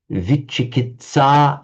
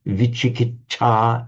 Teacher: a TS in Sanskrit almost always becomes a cha in Pali, which it does here.